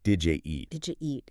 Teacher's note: Instead of separating did you, the d and yi sounds often combined to make a j sound. So it comes out more like did you eat?